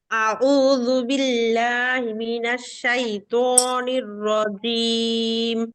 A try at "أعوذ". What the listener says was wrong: আচ্ছা আপু, আপনার শুরুতে আউযুর যে আইনটা আছে, আইনটা কেমন যেন হামজার মতো হয়ে গেছে আপু। আউযু, আউযু।